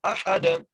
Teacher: ہا کو دال سے ملانا ہے اور دال پر قلقلہ کرنا ہے